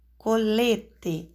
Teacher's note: Colete a sílaba tônica é lê penúltima